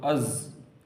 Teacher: از سیٹی کی آواز آئے گی لیکن قلقلہ نہیں ہوگا